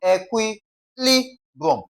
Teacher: Okay, equilibrium LI is stressed